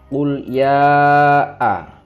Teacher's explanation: Qul ya a, itu ada mat tobi'i fathah bertemu hamzah a. Ya a itu dibaca 5 ketukan, yang artinya di situ mat wajib muttasil. Ada mat tobi'i bertemu hamzah dalam satu kalimat.